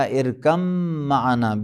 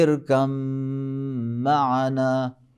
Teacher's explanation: بالکل جو ہے بے کو میم میں ادغام کیا ہے، کوئی بے کا اثر بھی نہیں ہے